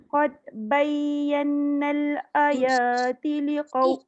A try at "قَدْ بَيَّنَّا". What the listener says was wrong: Yang ini kena qalqalah sebab dal tu mati. Qad bayyannal.